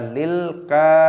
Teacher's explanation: lam memiliki sukun, kita hentikan, baca lilka, panjangkan kaf, ra dibaca panjang dengan ya sukun, lil kafirina.